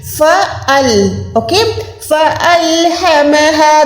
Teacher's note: یہ فال نہیں ہے, ٹھیک ہے, الف کو آپ نے الگ سے ادا کرنا ہے. فَأَل, اوکے, فَأَلْهَمَهَا, دونوں ہا جو ہے سینے والی ہیں, یہاں پر آپ جو ہے حلق کو زور نہیں دے سکتے.